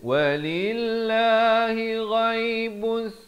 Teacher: ghaib di hujung kerongkong